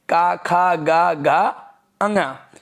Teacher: जो का वर्ग है वो कंठ से निकलेगा